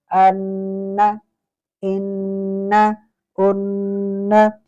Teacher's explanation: اسی طریقے سے اگر نون مشدد اس میں آ گیا تو ان، حمزہ نون زبر ان، یہاں پر غنہ زمانی غنہ ہوگا، اس میں غنہ بھی کریں گے اور زبان کا طرف لسان جو ہے وہ ثنایا کی جڑوں تک لگائیں گے